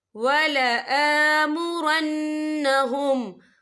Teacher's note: وَلَآ حمزہ کے پر کھڑی حرکات ہے تو ہم یہاں 2 یا 3 حرکت کے برابر کھینچ کے پڑھیں گے